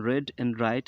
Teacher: R sound as in red and right is formed with the tongue tip raised and curled back near the alveolar ridge.